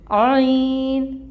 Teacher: عین جو ہے یہ آپ وسط الحلق سے نکالیں گے، اور اس کی آواز حمزہ سے فرق ہونی چاہیے